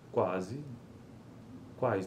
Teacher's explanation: e correspondem a uma oclusiva velar labializada. Nessas consoantes, articulamos a oclusiva velar, K ou G, concomitantemente com o arredondamento dos lábios.